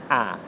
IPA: æ